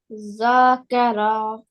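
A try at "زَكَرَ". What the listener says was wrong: Yeah, good, mashallah.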